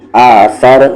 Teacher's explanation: سا زبان کا کارنر، سامنے والی دانت کا کارنر، اور را ہیوی ہوگا کیونکہ اس کی ساؤنڈ اوپر ہے